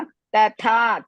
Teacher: ಥ ಇಸ್ ದೀರ್ಘ ಅಂಡ್ ಮಹಾಪ್ರಾಣ